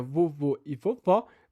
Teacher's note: diferença de altura de vogais